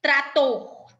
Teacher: trator é a última sílaba mais forte